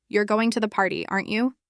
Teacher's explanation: With a rising tone if you're unsure and really asking